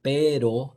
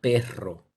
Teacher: In Spanish, we have two R's. We have R like in pero, and then a multiple vibrant like perro.